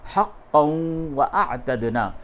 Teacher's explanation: حقاً نہیں بولیں گے، قاف دو زبر قن نہیں بولیں گے بلکہ قاف واو دو زبر قوں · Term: ادغام